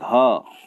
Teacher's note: घा में ज़्यादा हवा निकलती है, मतलब मुंह से ज़्यादा वायु उच्चारित होती है, तो घा भी एक महाप्राण है।